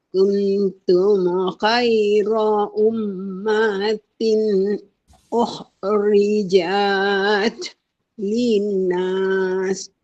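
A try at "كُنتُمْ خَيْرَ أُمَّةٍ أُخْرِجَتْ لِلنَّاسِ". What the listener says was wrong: Jangan baca jat tu panjang. Jat. Salah tu. Ukhrijat linnas. Macam tu.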